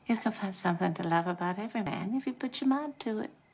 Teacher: The sounds blend together and you get that slight ch sound. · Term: assimilation